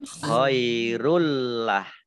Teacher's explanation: Tapi lamnya dibaca double ya, ada ditandai dengan ada tasdidnya.